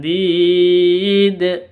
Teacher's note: Kalau berhenti maka dalnya berubah menjadi sukun, berubah menjadi qalqalah. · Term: qalqalah kubra